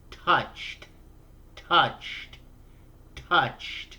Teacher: Touch ends with a ch sound. So you simply add a T sound to make it past tense.